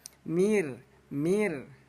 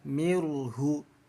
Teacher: Jangan sampai dibaca tebal mirhu, tapi mirhu. Ditipiskan bunyi ro-nya ya, dibaca tarkik. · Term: ro tarkik